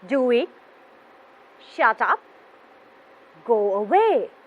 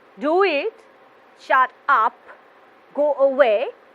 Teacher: we use a falling tone to show the end of an order